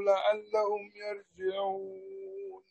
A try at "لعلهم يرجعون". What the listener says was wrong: فخم الراء لعلهم يرجعون.